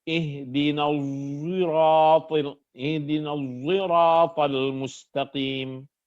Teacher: Hamzah membaca as-sirat ini dengan memasukkan unsur zai. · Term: ismamiz zai